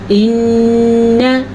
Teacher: ناک میں آواز چلی جاتی ہے اور نون کے غنے میں زبان اوپر والے دانتوں کی جڑ سے لگتی ہے، سامنے کے اوپر والے دانتوں کی جڑ سے لگتی ہے تو غنہ ادا ہوتا ہے۔